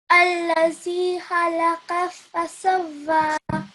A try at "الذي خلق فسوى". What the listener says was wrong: Okay, so this is allazi, hissing sound, and this is. Yeah, kha. Khalaqa. I couldn't hear kha sound clearly.